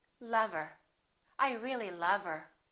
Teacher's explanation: let's look at what happens to the word her same thing we drop the H